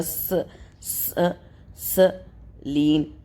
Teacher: میم کے اوپر ہے پیش تو یہ رو ہوگا موٹا، اس کے بعد سین کا مخرج، سین سیٹی والے حروف میں آتا ہے، سین اور صاد کا مخرج ایک ہی ہوتا ہے، صرف ڈفرنس یہ ہے کہ سین کو باریک کر کے پڑھا جاتا ہے اور صاد کو موٹا کر کے پڑھا جائے گا۔